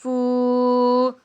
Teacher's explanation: واو مدہ ہے اور اس کو بھی ہم ایک الف کی مقدار کھینچ کر ادا کریں گے